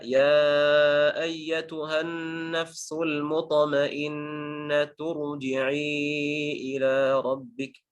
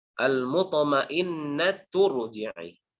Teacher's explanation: ketika kita sambungkan dengan ayat sebelumnya, maka harokat kasrohnya akan hilang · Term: harokat kasroh yang palsu